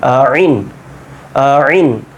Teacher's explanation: খেয়াল করেন আইন যখন বলছেন এই জায়গাতে গলার মধ্যখান হতে উচ্চারণটা হবে